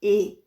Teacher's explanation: Em espanhol, ela vai ter sempre o som como se fosse um E com acento circunflexo, então é um som fechado, E. Em espanhol não existe o som de E.